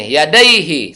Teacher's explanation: Sebelum hak domir terdapat berbaris ya sukun, maka tidak dibaca mad sila qasira. Pendek bacanya. Yadaihi, satu ketuk.